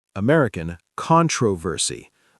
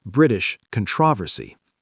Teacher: British English puts the stress on the second syllable.